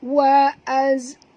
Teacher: Zai bukan huruf qalqalah, tak boleh lantun ya. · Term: huruf zai